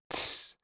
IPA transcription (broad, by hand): tˢ